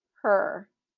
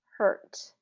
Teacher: Hurt has that R pulled back, that tongue pulled back. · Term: blending R